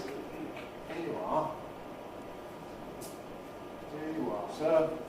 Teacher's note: You has got the weak form of you, the neutralization vowel.